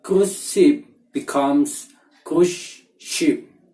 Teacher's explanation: We can find the assimilation again in word cruise ship. The S sound in cruise become sh sounds because the next word is ship.